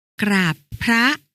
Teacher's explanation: อ่านออกเสียงพยัญชนะต้นทั้ง2ตัวหน้าเป็นเสียงกล้ำพร้อมกัน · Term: เสียงควบกล้ำสนิท